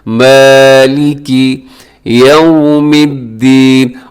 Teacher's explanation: یہ مالکی میں کاف کو لمبا بھی نہ کیجیے گا، اس سے بھی معنی تبدیل ہو جاتے ہیں.